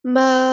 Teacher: ہم ساکن کریں گے تو ما ایسے نہیں کریں گے ساکن، حمزہ ساکن کی آواز ہونی چاہیے، چھٹکا ہونا چاہیے